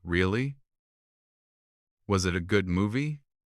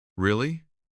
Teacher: He uses a rising intonation. His voice goes up at the end.